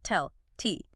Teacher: This is when the T is pronounced clearly with a little puff of air, typically at the beginning of a word or a stressed syllable. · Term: true T